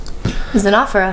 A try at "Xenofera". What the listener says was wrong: Xenofera. I think you put the emphasis on the wrong syllable.